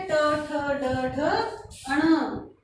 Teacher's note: जीभ जो है वो मूर्धा स्थान पर स्पर्श हो रही है। ट, ठ, ड, ढ, अण, ये हो जाएंगे मूर्धन्य।